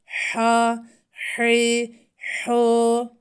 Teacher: Ha harfinde nefesi ağzımızdan akıtıyoruz.